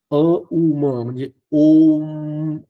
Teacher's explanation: हळूच ओठ मिटायला लागतात त्यावेळेला उ असा उच्चार सुरू होतो मग हळूच तो उ सुद्धा सुटून जातो जेव्हा ओठ मिटतात आणि मग असा मकार सुरू राहतो